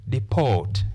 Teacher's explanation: the first syllable has the short vowel sound e, but the second syllable has the long vowel sound o.